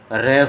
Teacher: जब र बोलते हैं तो स्वर तंत्रियों में थोड़ा सा कंपन होता है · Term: प्रकंपित ध्वनि